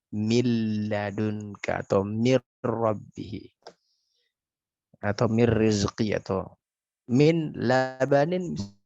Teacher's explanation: Tapi ketika ditanyakan dari segi kesempurnaannya, maka ini disebut dengan idgham kamil. Karena kenapa? Nunnya sempurna masuk ke lam.